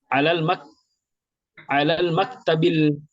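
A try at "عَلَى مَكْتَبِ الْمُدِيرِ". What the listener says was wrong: Tidak ada alif lamnya. Al-maktab tidak ada alif lamnya.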